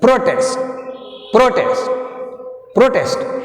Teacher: ఈ ప్రొటెస్ట్ అనే వర్డ్ని నౌన్గా వాడితే ఫస్ట్ సిలబుల్ మీద వస్తుంది, ప్రో మీద.